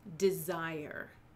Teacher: Iambic, that is a pair of syllables, the first syllable being unstressed, the second syllable being stressed